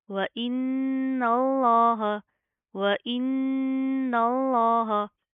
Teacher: पहले नून के ऊपर शद है, गुन्ना करेंगे, ना के अंदर साउंड पैदा करेंगे, फिर इस नून को इस लाम के साथ प्लस करेंगे लफ्ज़ अल्लाह के, ठीक है।